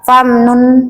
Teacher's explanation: nun sukunnya tidak lagi kita mencucukkan bibir kita